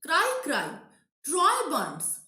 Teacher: the first two words are stressed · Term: spondy